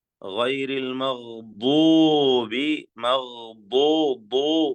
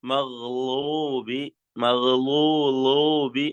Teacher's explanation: സൈഡില് നാവ് മേലെ അണപ്പല്ലിലേക്ക് ചേർത്തുകൊണ്ട് ഉച്ചരിക്കേണ്ട ദ്വാദ്